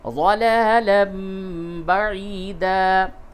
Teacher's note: قلب یعنی تنوین کی آواز کو میم سے بدل کے پڑھیں گے